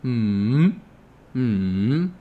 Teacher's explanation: mm-hmm if you go back to the numbers video oh right it starts higher it goes lower than higher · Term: third tone